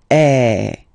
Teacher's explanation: so it's really open I mean the sound is really open and normally your mouth should be opened a little bit more than with the accent as well okay so it goes like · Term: accent grave